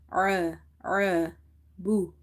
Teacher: Ain is from the middle of the throat and it's a bit squeezing sound.